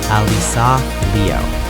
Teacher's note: Ah-LEE-sah, not Alyssa. And Liu, 1 syllable, not Liu or Lu or Lo.